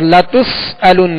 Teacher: اور لتسألن یہاں سین ہے، سین میں سختی یعنی سیٹی کی آواز پیدا ہوگی. اور لتسألن حمزہ ہے، لتسألن تو اس کو علن عین کی آواز میں نہیں پڑھیں گے بلکہ حمزہ کو سختی کے ساتھ ادا کریں گے.